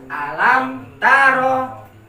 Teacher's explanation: Lamnya dipendekkan supaya tidak berdengung.